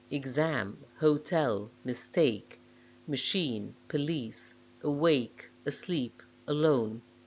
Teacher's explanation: exceptions are exam hotel mistake machine police awake asleep alone stressed on the second syllable verbs are usually stressed on the second syllable in two syllable